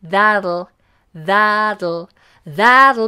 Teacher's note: lateral plosive so it comes out the side